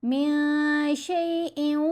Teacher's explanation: ہم نے میاں پڑھنا ہے، من نہیں پڑھنا. نون کی آواز کو ناک میں چھپائیں گے، ساتھ غنہ خفیف ہوگا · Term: اخفا